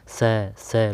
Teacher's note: स है यह वर्ण संघर्षी है जैसे बोलने में भी तो संघर्ष हो रहा है